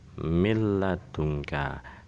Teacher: nun mati di sini bertemu dengan lam dibaca menjadi lam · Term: idgham bila gunah